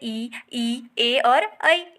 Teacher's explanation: अग्र यानी आगे, मध्य यानी बीच में, पश्च यानी कि पीछे। तो जिन स्वरों के उच्चारण में जो जीभ का आगे का भाग काम करेगा उसे बोलेंगे अग्र स्वर।